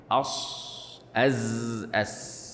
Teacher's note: يقول فالصفير من علامات قوة الحرف، والصاد أقواها، يعني أقوى حروف الصفير الصاد، والصاد أقواها للإطباق والاستعلاء اللذين فيها، والزاي تليها في القوة للجهر الذي فيها، والسين أضعفها للهمس الذي فيها